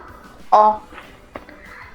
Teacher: na palavra óculos o ó tem o som forte e aberto